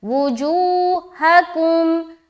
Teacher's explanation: آگے وجوہکم, واپش وو, جیم واپش جو, ہا زبر ہا, کاف میم پیش کم, وجوہکم, جو میں واو مدہ. باقی کہیں پر بھی دیر نہیں کرنا, بغیر کھینچے پڑھیں گے سب جگہ, صرف جو میں کھینچنا ہے